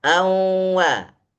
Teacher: Nun masih ada ghunahnya sedangkan Wa sudah dibaca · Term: idgham